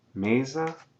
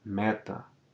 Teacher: We have the difference between mesa, closed E, and meta, open E.